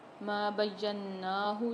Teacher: نون پر غنہ کر کے پڑھیں گے اور کھینچ کے بھی پڑھیں گے